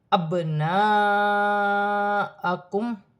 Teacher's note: رہی ہے، ایک الف کی مقدار کھینچ کر پڑھا جائے گا، با ساکن ہے، حروف قلقلہ میں سے ہے، قلقلے کے ساتھ ادا کیا جائے گا